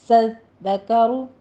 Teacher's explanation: زال کے اوپر تشدید ادا کرنی ہے، آگے را مفخم ہو جائے گی